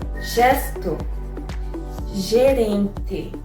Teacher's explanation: Before E and I, it takes a ZH sound, like the word measure.